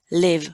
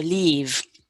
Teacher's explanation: they cannot make a distinction in vowel quality and so they say live for leave